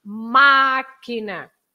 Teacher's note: You have the accent on the I, on the A, so it's ma. Máquina. So you stress that part.